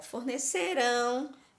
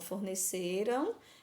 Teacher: como tá no futuro, a sílaba mais forte é a última. Então, a palavra oxítona.